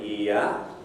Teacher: the approximants can actually be shown on vowel diagrams and this is similar to a vowel of an e type